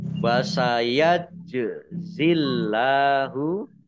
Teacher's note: jim sukun bacaan kolkolah, dibaca memantul, ditampakkan pantulannya. Allahnya dibaca tipis karena harokat di depannya kasroh.